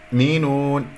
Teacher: أولا لا أسحب ضمة الياء إلى الهمزة الساكنة، ثانيا لا أقلقل الهمزة يؤمنون لأنه لم يحدث عندي انقفال الأوتار الصوتية، فانتبهوا يؤمنون، هذا هو المقطع، اجعلها مقطعين.